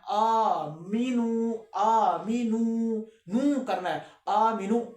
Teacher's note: वाव को एक अलिफ जितना खींचना है, आ मीनू, नू करना है, आ मीनू, ऐसे नहीं करना, इसको थोड़ा सा नू ऐसे करके एक अलिफ जितना आगे तक लेकर जाना है। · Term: मद